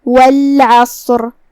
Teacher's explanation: عین کی ادائیگی حلق کے درمیان والے حصے سے ہے · کلمت والعصر میں یہاں شروعات میں لام القمریہ ہے. ہم لام کو ظاہر کریں گے اور اسے جزم سے ادا کریں گے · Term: حرف العین